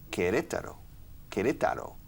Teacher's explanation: The stress falls on the second syllable. Okay. The stress is on the second syllable.